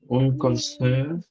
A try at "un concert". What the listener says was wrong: উন না, কনসার্ট হচ্ছে ম্যাসকুলিন, আ কনসার্ট।